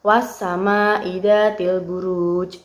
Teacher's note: dari ayat tersebut juga terdapat huruf qalqalah berupa jim. Jim ini diwakafkan di akhir kalimat